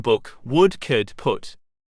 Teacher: The tongue and jaw are raised as the back of the tongue is used to articulate this vowel. Therefore it is a back close high vowel. The lips are rounded.